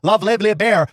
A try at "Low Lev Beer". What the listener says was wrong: Low Lev Beer. You heard the word beer before. You said love Lev Beer. Bear. You said love Lev Bear. Yeah, not bear. Love Lev Bear is what you said.